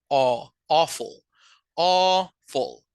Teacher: que es el sonido de O, como que si fuera un bostezo medio abierto